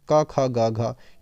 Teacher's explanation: ये आपकी कंठ ध्वनियाँ है, का वर्ग पूरा का पूरा कंठ पे आधारित है